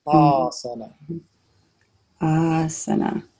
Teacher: Asana is long, short, short.